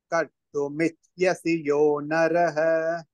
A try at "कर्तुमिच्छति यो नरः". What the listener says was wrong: Michyasi is not there. Michyati.